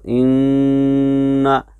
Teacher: नून मुशद्दद और मीम मुशद्दद, जिनको हुरूफ गुन्ना कहा जाता है, जिनकी आवाज़ नाक में हर हाल में जाती है। नून और मीम की उनकी सिफतें लाजिमा हैं।